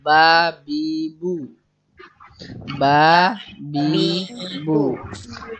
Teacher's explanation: Ba itu bibir atas dan bibir bawah dirapatkan bersama-sama. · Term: makhraj huruf ba